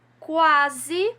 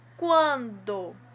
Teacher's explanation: Vocês vão com certeza me responder que foi da palavra quando, porque essa consoante N depois do ditongo nasalizou esse ditongo, né? O som saiu mais pelo meu nariz, eu consegui sentir uma vibração maior saindo pelo meu nariz.